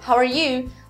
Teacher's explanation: Eu vejo muitos americanos falando how are you. Eles põem o acento da frase no you, né?